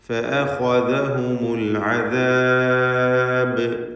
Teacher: ബായിൽ വഖഫ് ചെയ്യുമ്പോൾ ഖൽഖല കുബ്റ നൽകിക്കൊണ്ട് നല്ല വ്യക്തമാക്കി ശബ്ദം ചലിപ്പിച്ച് ആ ബാഇൻ്റെ സുക്കൂൻ കേൾപ്പിച്ചുകൊണ്ട് ഉച്ചരിക്കണം.